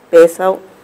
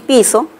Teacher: la función distintiva se da entre la E y la I, ¿no? Estas vocales más bien son vocales anteriores.